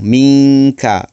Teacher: nun mati bertemu dengan huruf kaf. Kaf merupakan salah satu huruf ikhfa. Maka dibaca dengung. Minka. Maka hukum di sini ikhfa hakiki.